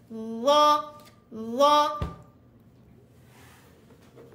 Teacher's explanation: ujung lidah dikeluarkan dan ditekan ke ujung gigi atas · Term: keluar lidah